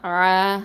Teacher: ஐன் ஃபத்ஹா அலிஃப் சகைரா ஆ, 2 ஹரக்கத்தை நீட்டணும்